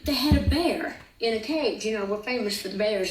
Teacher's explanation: I was told to listen for a sh sound on the S's.